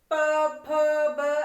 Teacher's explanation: हर अक्षर में हमारे होठ चिपक रहे हैं। प फ ब ऐसे, ये उ, तो होठों पे हमारा उ बन रहा है होठ। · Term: ओष्ठ वर्ण